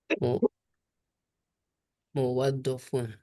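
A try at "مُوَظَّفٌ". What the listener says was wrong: Ya, muwazzaf pakai dha. Ya, pakai dha.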